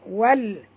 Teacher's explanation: Alif lam qamariyah, bunyikan lam yang mati dengan jelas